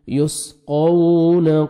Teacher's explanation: یسقون قاف کو موٹا کر کے پڑھنا ہے اور واو لین ہے, نرمی سے ادا کریں گے